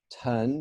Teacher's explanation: would be pronounced or spelled in ipa this way pronounced ton put your hand up in front of your mouth ton you feel the puff of air